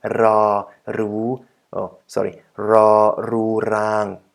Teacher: the r sound, which is also built using the tip of our tongue, but right behind our teeth, the back of our mouth, like ra, ru, ra, ru, rang.